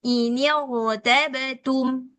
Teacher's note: Kemudian membacanya menjadi inirtum tebal rnya jadi tafkhim enggak boleh tipis walaupun sebelumnya ada kasrah karena ini bukan kasrah asli